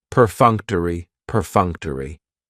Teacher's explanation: That third syllable has the schwa, and it's going to end with that long E sound.